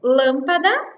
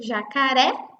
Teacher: vejam que o lâmpada é um som fechado, enquanto jacaré é um som aberto. Por isso a diferença dos dois acentos.